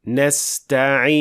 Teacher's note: While it should be somewhere in between, where you show the Noon and its Ghunna without extending or exaggerating the sound